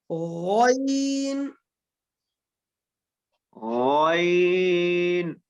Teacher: غین صحیح جو ہے نا اوپر سے ادا کریں, ابتدائی حلق سے